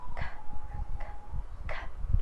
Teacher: K is voiceless velar stop